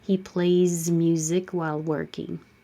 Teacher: Play. A ends with a vowel, which is voiced. So you use the voiced Z, keep your voice on.